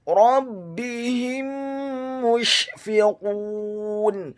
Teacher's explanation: Kata rabbihim, huruf ra-nya dibaca tafkhim, tebal, fathah satu harokat. Huruf ba-nya dibaca tipis, tarqiq, ditasydidkan, ditekankan, kasrah satu harokat.